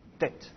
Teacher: C'est un T emphatique, donc un peu plus dur normalement. Donc, en principe, il faut essayer de le prononcer en arrière dans la gorge.